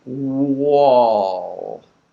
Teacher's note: we're rounding the lips for W. Wall. And then they're coming back normal.